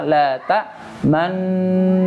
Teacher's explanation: Kalau tadi yang pertama la ta'manna sampai terakhir, dari awal dengung sampai terakhir bibir posisinya monyong